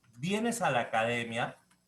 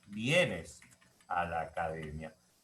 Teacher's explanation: en el primer enunciado yo tengo entonación ascendente y en el segundo entonación descendente